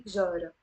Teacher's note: You notice here the te marbuta is silent. I'm not pronouncing it. I don't say jarat, I say jara.